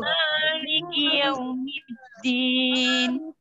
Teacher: Jadi mim kan termasuk huruf yang at-tawasud, mengalir sedang. Jadi membacanya ndak ndak mali, terasa mengalir dulu.